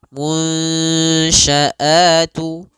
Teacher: kita samarkan nunnya kepada huruf shin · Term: idgham naqis